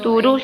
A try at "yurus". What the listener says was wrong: es tú. No es tú, es yu. No está bien escrito, sino solamente la pronunciación es yu, no es yurus. Es yurus. Yurus.